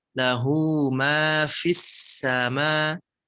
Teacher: Fi-nya ada nafas keluar, terdengar bunyi F-nya.